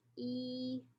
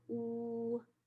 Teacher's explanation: you can feel your tongue move from the front of your vocal cavity towards the back of the vocal cavity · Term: tongue advancement